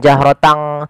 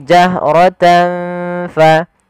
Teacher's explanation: Kemudian tanfa, ada bacaan ikhfa pada lafal tan bertemu dengan huruf fa, yaitu suara tannya disamarkan kepada huruf fa. Ikhfa membaca di antara idgham dan izhar.